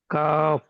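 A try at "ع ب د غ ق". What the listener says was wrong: দেখেন এখানে যে কটা অক্ষর আছে প্রত্যেকটা অক্ষর কিন্তু 3 আলিফ পরিমাণ টান আছে, আপনার একটাও 3 আলিফ টান হচ্ছে না।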